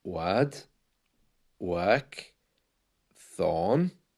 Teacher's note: The R is silent, and you know that the letter R is often silent towards the end of words like word, work, thorn. You can hear that the R is almost gone.